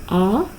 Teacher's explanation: A is a back, open, unrounded vowel.